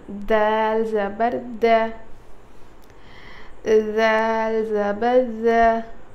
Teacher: ज़ुबान की नोक सामने के दांतों के किनारे पे लगाने से अदा होता है